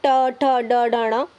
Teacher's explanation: ट, ठ, ड, ढ, ण। इनको हम किससे बोलते हैं? मूर्धा से बोलते हैं।